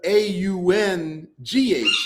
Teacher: when you make the gh sound, the back of your tongue slides back. So, your tongue slides back and your tongue curves and the tip of your tongue touches the roof of your mouth.